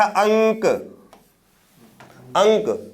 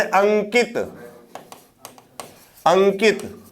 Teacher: ये जो बिंदु है अनुस्वार, इसका उच्चारण कहां से हो रहा है, नाक से हो रहा है।